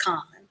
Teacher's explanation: the o has the ah sound here